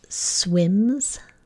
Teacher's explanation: m is a big motor on sound so we're just going to keep the motor on when we add the suffix s